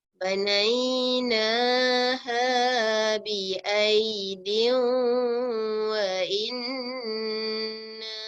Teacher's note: nun sabdu jangan lupa harus kita beri dengung.